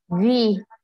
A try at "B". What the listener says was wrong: Try to exaggerate the sound. So look at my lips. B. So your lips come together. Come together, right? B. And they do this movement. B. So B. V. B. B. Look at my lips. B. V.